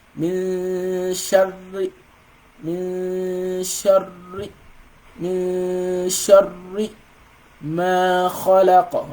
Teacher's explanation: So this one means there's one ra with sukun and another ra with kasra. So you're pronouncing like a silent ra first before pronouncing the one with the kasra. So that's how you're going to pronounce this ra with the shadda here.